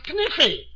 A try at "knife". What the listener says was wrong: K is the silent letter. K is always silent in front of N.